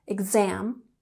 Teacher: We have emphasis on the second syllable